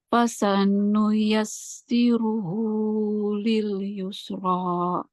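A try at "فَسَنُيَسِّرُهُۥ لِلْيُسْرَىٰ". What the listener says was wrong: Jangan ditambah hamzah. Yusra. Jangan yusra.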